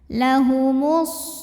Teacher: lalu berikutnya ada hukum alif lam namanya alif lam syamsiah karena alif lam menghadapi huruf Syamsiyah yaitu Shad maka alif lam tidak perlu dibaca